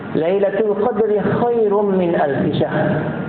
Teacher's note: Lailatul Qadri ada letupan dekat qadr